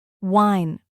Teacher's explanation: For W, your lips round forward like wine.